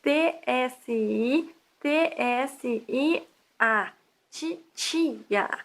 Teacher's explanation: Na pronúncia normal do Sudeste, a consoante que escrevemos T é pronunciada TS, como em tcheco, toda vez que é seguida de um I. Esse fenômeno fonético se chama palatalização.